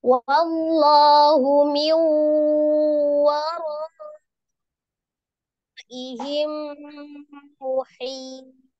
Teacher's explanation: huruf to-nya karena kita sukunkan maka dipantulkan atau dikolkolahkan ya. Jadi hukumnya to ketika disukunkan baik karena wakaf ataupun asli sukunnya maka dia dipantulkan.